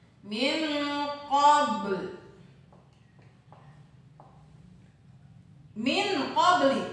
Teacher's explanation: Dibaca samar antara bunyi en dengan bunyi eng. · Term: ikhfa